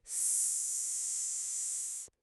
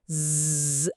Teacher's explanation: అస్ అనేది వాయిస్లెస్, జ్ అనేది వాయిస్డ్